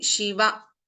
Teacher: Shiva is a ending with a hrasva, short vowel. We are not prolonging